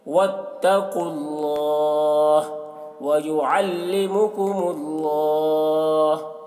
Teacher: اللہ کا لام کو پر پڑھیں گے کیونکہ اللہ کا لام سے پہلے پیش ہے